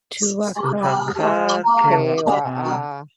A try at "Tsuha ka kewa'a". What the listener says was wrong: This TSU, you pronounce them both tsu. Tsu. And next word is ha. And then ka. And then this next one is an underlined K. So you'll pronounce in the back of your throat. Kewa'a. Tsuha ka kewa'a.